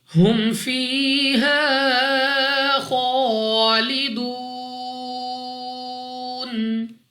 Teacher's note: الف سے پہلے زبر الف مدہ 2 سیکنڈ تک اس کو بھی کھینچیں گے. خوا مستعالیہ میں سے ہے پر پڑھنے کے ساتھ ساتھ 2 سیکنڈ تک لمبا کرنا ہے. واو ساکن سے پہلے پیش واو مدہ، مگر وقف میں جب نون کو ساکن کریں گے تو واو مدہ کی بجائے مد عارض ہوگی جس کی وجہ سے یہاں پر 3 4 یا 5 سیکنڈ تک کھینچ کر پڑھنا ہوگا. · یا ساکن سے پہلے زیر یا مدہ 2 سیکنڈ تک لمبا کرنا ہے. الف سے پہلے زبر الف مدہ 2 سیکنڈ تک اس کو بھی کھینچیں گے.